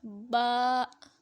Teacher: با کو ایک الف کی مقدار تک لمبا کریں گے۔